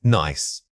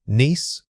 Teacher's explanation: the first word uses a short quick vowel sound while the second requires you to hold that e sound longer and spread your lips more widely